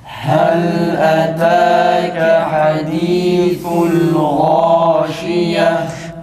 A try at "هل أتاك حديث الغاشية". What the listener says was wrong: Hala hadisul değil. Hadisul esrenin iyi çıkması için dudağımızı hafif bir şekilde geri çekiyoruz.